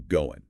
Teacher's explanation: The full form is going, pronounced clearly with that final G. However, in practical, rapid, informal speech, the final G sound in the ing ending is very often dropped, and this results in the natural reduction to goin'.